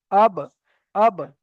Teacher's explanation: দুটো ঠোঁটের ভিজে অংশ থেকে উচ্চারিত হয়।